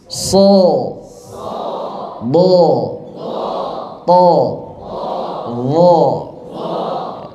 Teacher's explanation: yang itbaq itu suaranya seperti terkumpul di dalam mulut tapi jangan ditelan. Jadi lebih kuat lagi ke langit-langitnya.